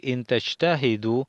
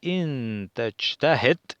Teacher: ese sukun del final nos quita la vocal y le da una entonación fuerte